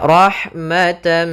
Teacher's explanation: tanwinnya atau nunnya masuk kepada huruf setelahnya maka rahmatan sambil ditahan gunahnya karena di sini bunah idgham artinya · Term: idgham bihunah